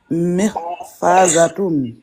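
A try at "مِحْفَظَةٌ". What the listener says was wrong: Mih. Mih. Ne prolonge pas. Mihfazatun. Vas-y, dis ha. Mih. Mih. Fazatun.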